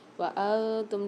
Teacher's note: نون ساکن اور تنوین کے بعد 15 حروفوں میں سے تا آ رہی ہے، وانتم، تو یہاں پر ہم غنہ کر کے پڑھیں گے